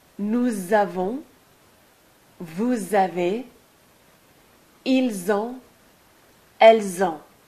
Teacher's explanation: you always pronounce a Z between the S and the A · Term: liaison